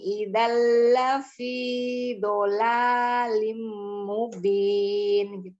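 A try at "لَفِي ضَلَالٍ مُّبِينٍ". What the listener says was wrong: Fi-nya terlalu panjang. Lafi dhalalin mubin. dhalalin. Jangan terlalu panjang. Jangan. Satu ayunan saja. Dua harok atau seperti mengayunkan tangan. Lafi dhalalin. Jangan lafi dhalal. Jangan tidak ada tasdid. Lafi. Dhalalin mubin.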